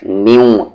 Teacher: آواز ناک میں کیوں جا رہی ہے؟ کیونکہ نون ساکن کے بعد واو ہے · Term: ادغام وتھ غننے کا